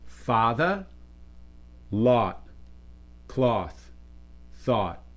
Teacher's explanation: oftentimes it becomes father, lot, cloth, thought. So these all become identical.